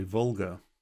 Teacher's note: And if you take, say, the English L, and the tongue is sort of on the ridge of the hard palate, you know, so it's a bit further back, which makes it sound somehow sort of fatter. When Germans say an L, the tongue is really behind the teeth, so it's a lot further forward, and it makes it somehow different, thinner maybe.